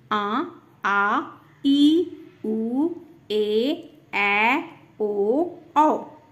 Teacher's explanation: इन स्वरों के उच्चारण में ह्रस्व स्वरों से दुगना समय लगता है। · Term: दीर्घ स्वर